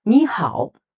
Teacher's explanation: Two third tone, and the first character needs to change to second tone.